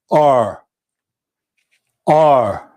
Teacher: I'm just vibrating here, pushing the sound out, and the tongue is flat.